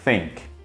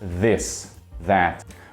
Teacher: A diferença é que no primeiro caso é só um som assoprado, sem usar a voz. Think. Já no segundo caso, a gente precisa usar a voz também.